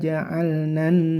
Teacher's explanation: alif lamnya enggak terbaca langsung ke huruf nun yang bertasdid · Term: alif lam asyamsiyah